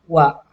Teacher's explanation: Nah, di sini kemudian huruf wa-nya itu sama seperti huruf ya, semi vokal. Karena ketika mengucapkan huruf wa, kita seperti mengucapkan huruf u, baru berubah jadi a, wa.